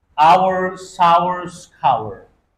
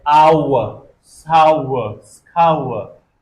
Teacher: But in British English, R becomes silent at the end.